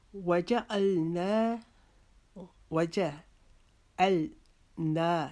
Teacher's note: نا کو ہم ایک الف کے جتنا لمبا کریں گے، اس کو نا نہیں پڑھیں گے.